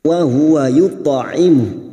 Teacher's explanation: huruf ta sukun yang mati asli di tengah kalimat qalqalah sugra, jangan lupa dipantulkan. Dan huruf ta ini huruf isti'la, maka cara memantulkannya dengan posisi bibir kita yang seperti cemberut.